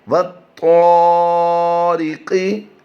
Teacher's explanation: ری کی آواز باریک دیں گے، را کے نیچے زیر ہو تو را باریک پڑی جاتی ہے۔ قاف کی ادائیگی ہم پھر پور کریں گے۔